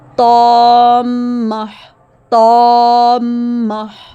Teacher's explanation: دیکھیے طا کے ساتھ الف اور میم پر شد ہیں، تو اس لیے ہم نے طا کے ساتھ الف ادا کرتے ہوئے میم کو ملانا ہے، 2 حرکے کے برابر ادا کرتے ہوئے میم شد کو ملائیں گے اور میم کو مضبوطی سے گنا کریں گے